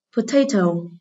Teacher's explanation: từ này có ơ ở âm tiết số 1, thì vậy trọng âm rời tiết số 2.